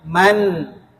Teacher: Ada ghunah. Ada ghunahnya tapi enggak berlebihan.